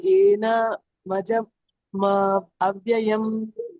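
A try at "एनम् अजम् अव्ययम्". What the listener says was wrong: ಇಲ್ಲಿ ಸ್ಪ್ಲಿಟ್ ಮಾಡೋದು ನೋಡಿ ಸರಿಯಾಗಿ. ಏನ ಮಜ ಅನ್ಬೇಡಿ. ಏನ ಮಜ ಅಂತಂದ್ರೆ ಏನ ಬೇರೆ ಆಗುತ್ತೆ, ಮಜಾ ಬೇರೆ ಆಗುತ್ತೆ. ಸೊ ಅದ್ ಬರಲ್ಲ. ಏನಂ ಒಂದು, ಅಜಂ ಒಂದು, ಅವ್ಯಯಂ ಒಂದು. ಏನಂ ಅಜಂ ಅವ್ಯಯಂ. ಇಲ್ಲಾಂದ್ರೆ ಕೂಡಿ ಹೇಳಿ. ಏನಂ ಅಜಂ ಅವ್ಯಯಂ ಕೂಡಿ ಹೇಳಿ. ಅಲ್ಲಿ ಮತ್ತೆ ಸ್ಟಾಪ್ ಮಾಡಬಾರ್ದು ಕೂಡಿ ಹೇಳುವಾಗ. ಏನಂ ಅಜಂ ಅವ್ಯಯಂ.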